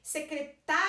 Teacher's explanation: Então, o tá é o mais forte.